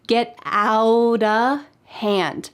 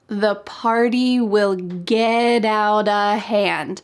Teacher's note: In fact, the word of changes to just a.